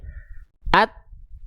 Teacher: Ketika nempel dia enggak keluar percikan nafasnya, tapi dia tertahan suaranya. At tuh kan kena nih tertahan suaranya. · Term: Syiddah